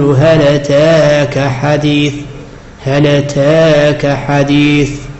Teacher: فورش له نقل حركة أتاك إلى الساكن في هل، وفيه عنده التقليل الألف الواقع بعد التاء يميله إمالة التقليل، فيقول هل أتاك حديث، هل أتاك حديث، بينما قالون يخالف في الحكمين فيقول هل أتاك بالفتح الخالص.